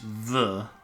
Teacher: Oh, no, it's a T. It's a voiced TH. The. I think.